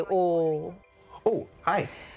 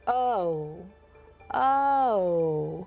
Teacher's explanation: in a general American accent or other accents in the United States, the O is a diphthong. It has two sounds. So it goes O. · We do the O as a monophthong